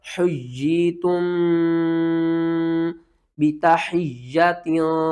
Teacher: حجی، تا پر میم ساکن کے بعد آگے با آ رہا ہے، جب بھی میم ساکن کے بعد اگلا حرف با ہوگا تو ہم میم کے اوپر کیا کریں گے، اخفا کریں گے، اخفا شفوی